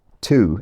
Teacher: tu if you have a yod dropping accent, or tu if you have a more conservative accent with yod.